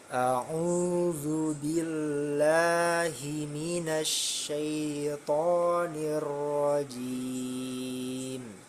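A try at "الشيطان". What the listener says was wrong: Sempurnakan sya-nya. Syai, sya, syaito.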